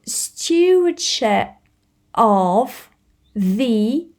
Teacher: it's a th but it's the th with a voice it's not with air